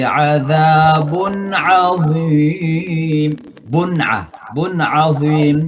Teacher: tanwin ketemu dengan ain, dibaca dengan izhar, jelas cara bacanya